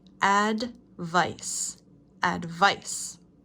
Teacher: Emphasis is on the second syllable.